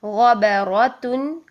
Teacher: غین موٹا ہے اور را موٹا ہے